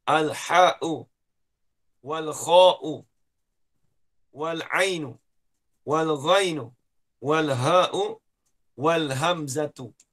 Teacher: Huruf halak, ini huruf yang keluar daripada halkum.